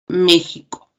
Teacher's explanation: México es otro ejemplo donde esta letra X se pronuncia como una velar ja